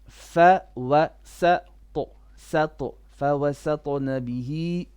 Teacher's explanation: Now here, فوس, sin flat, ta heavy with a qalqala.